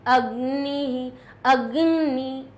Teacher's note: वो ग जो है वो न के साथ में ध्वनि उत्पन्न करता हुआ निकलेगा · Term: यम वर्ण